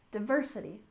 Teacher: diversity with stress on the second syllable